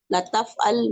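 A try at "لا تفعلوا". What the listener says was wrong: जी, इसको जरा क्लियर बोलना चाहिए। ला ल ल होगा ना तो वो अलबत्ता वाला ल बन जाएगा। ये नहीं वाला ला है। ला तफ़अल, ला तफ़अलू।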